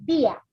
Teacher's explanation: Día tiene una vocal débil y una vocal fuerte, pero día se acentúa en la I. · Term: hiato